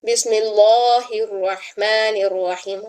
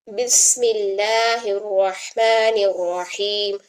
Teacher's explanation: इसमें जलाला से पहले जेर आने की वजह से इसका कायदा अप्लाई करना है कि इसमें जलाला के लाम को बारीक पढ़ें